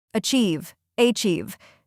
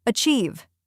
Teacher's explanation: 2 syllables. Stress on the second part.